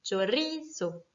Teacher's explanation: Le mot chorizo, qui est un mot qui se finit donc par un O, donc par une voyelle, va être accentué naturellement sur ri.